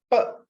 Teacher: you bring your two lips together, right? Then you block the entire air from your lungs. Then you release it in a puff, like an explosion, then the sound is pronounced. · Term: plosives